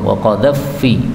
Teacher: Itu fa ketemu fa boleh idgham